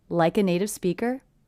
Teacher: in the entire sentence I don't hear any gaps or pauses between words · it's a T coming between 2 vowel sounds, will be a flap T, sounds like a D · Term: link